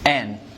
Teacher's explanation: Not and, just N. Reduction for and, like you're deleting the D.